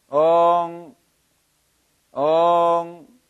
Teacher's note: 엉 발음은 시작할 때부터 끝날 때까지 입을 벌린 정도가 일정하게 유지되어야 됩니다.